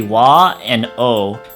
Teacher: the pronunciation with the O vowel actually doesn't use the sound of the W character at all. It's simply O and not Wo.